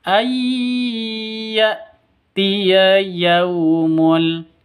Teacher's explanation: Ayyatiya, cara bacanya masuk ke ya, ay gitu, disertai dengung 2 ketukan.